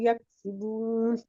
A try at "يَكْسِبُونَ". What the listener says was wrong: यक्सी, सीन का आवाज clear करे, यक्सिबून।